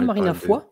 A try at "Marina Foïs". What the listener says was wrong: Non. Non, parce que je crois qu'il y a des trémas sur le i.